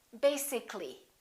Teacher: this a disappears so the a is not pronounced and we say basically